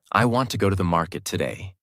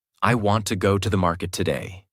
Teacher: Want, go, market are strong. Other words become lighter and faster. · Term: Natural American rhythm